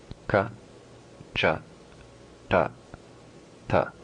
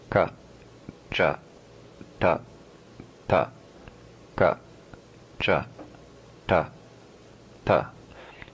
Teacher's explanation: Notice that the first position is the back of the tongue. The second position is more to the middle of the tongue. And the last 2 positions, the tip of the tongue. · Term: 4 tongue positions